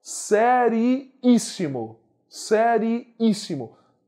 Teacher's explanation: Antepenúltima sílaba é mais forte. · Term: Proparoxítona